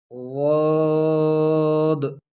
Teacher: ضاد کو زبان کا کروٹ یہ دانتوں کے نواجس کے ساتھ لگانا، یعنی جبڑوں کے جو دانت تھے اس کے ساتھ زبان کی کروٹ لگانے سے ضاد ادا ہوگی